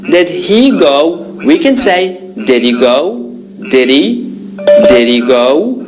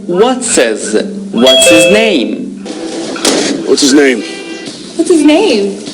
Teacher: in these pronouns we can drop the h when they're not stressed